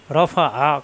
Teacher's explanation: আইন যাবর আ, কণ্ঠনালীতে চাপ দিয়ে। রফা আ, কোনো টান নাই, রফা আ।